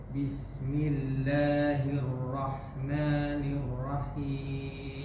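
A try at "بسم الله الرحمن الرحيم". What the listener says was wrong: sedikit lebih tipis manya, sedikit aja. Rahman.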